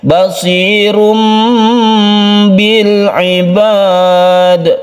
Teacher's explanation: Suara tanwin atau nun mati berubah menjadi mem mati sehingga kita membacanya basirum bil ibad. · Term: iklab